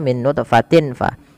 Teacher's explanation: Cara membacanya, tanwinnya samarkan ke fa, tidak lagi dengan jelas suara tanwinnya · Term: ikhfa